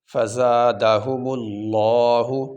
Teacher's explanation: تو یہاں پہ لفظ اللہ سے پہلے یہ پیش آ گیا، اس لیے ہم یہاں پہ لفظ اللہ کو موٹا کریں گے، آواز کو موٹا کیا جائے گا۔ فزادہم اللہ، میم زبر ما، را زبر را، مارا، ضاد زبر ظن، مرضن۔